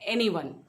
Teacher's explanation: एनीवन 3 syllable sound है, पहले पे स्ट्रेस है